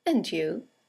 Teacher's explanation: And you is a statement. It has a falling intonation, and it's used to return the compliment or the greeting.